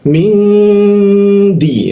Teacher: Di huruf dal ya. Da ujung lidah bertemu gigi